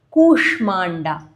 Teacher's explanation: you will feel that slight opening in the mouth when you say sh, like a air coming out